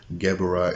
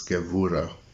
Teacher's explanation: the B is often pronounced as a V.